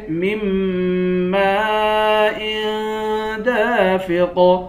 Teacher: میم کے بعد الف ہے، الف پر مد ہے، اس مد کو 5 الف کی مقدار کھینچ کر پڑھیں گے